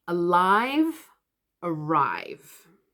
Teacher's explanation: they are going to sound pretty much the same if you're using the R sound, the Asian R sound